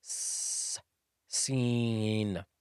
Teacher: Seen is pronounced when placing the tongue between the two incisors with a slight push at the top of the mouth.